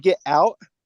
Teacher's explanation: So the glottal stop took the place of the T.